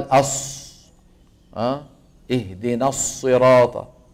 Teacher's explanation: انه هذا صواب هذا مو صواب يا اخوان هذا صوت زائد اعمال الشفتين في حرف الصاد زما الى الامام وضما للشفتين الى الامام يؤثر على الصوت